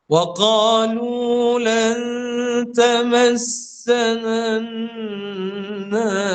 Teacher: sembunyikan nun mati itu dan gunnah itu menghala kepada huruf ta. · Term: ikhfa hakiki